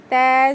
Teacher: زبان کی نوک اوپر کے دو دانتوں کے جڑ میں لگانے سے تا ادا ہوتا ہے